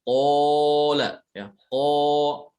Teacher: Kalau qaf dia itu isti'la, huruf yang isti'la sehingga suara yang dihasilkan itu tebal, qa. Sementara kalau kaf termasuk huruf istifal. · Kalau qaf kebalikan daripada kaf, selalu tebal, mufakhamah ya, dalam keadaan apapun selalu tebal, hanya ketebalannya tergantung ya, bertingkat-tingkat ketebalannya, tergantung kondisinya ya. Kalau dia dalam keadaan fathah dan di situ ada alif, maka dia paling tebal.